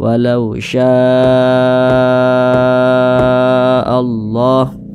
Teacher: Mad thiinya ini berjumpa nih dengan huruf hamzah tapi dalam satu kata dalam satu kalimat maka namanya berubah menjadi mad wajib muttasil panjangnya itu 4 hingga 5 harakat nah empat harakat atau kira-kira empat ketukan temponya tuh 1 2